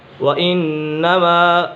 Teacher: نون مشدد ہے، نون مشدد میں ہمیشہ غنہ ہوتا ہے۔